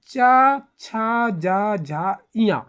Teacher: जो जीभ है वे क्या है, तालु को टच कर रहा है ना, ऊपर की ओर टच कर रहा है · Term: तालव्य व्यंजन